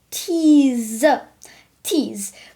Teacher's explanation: the e e sound which is uh once again this and we have the z sound not s